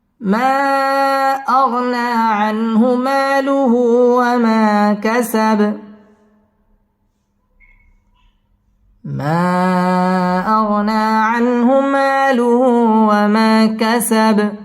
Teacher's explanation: মা মধ্যে মুনফাসিল 3 আলিফ টেনে পড়তে হবে। · ওয়া মা জবরের বাম পাশে খালি আলিফ মদের হরফ 1 আলিফ টেনে পড়তে হবে। ওয়া মা কাসাব বায়ের মধ্যে সাকিন করে ওয়াকফ করতে হবে।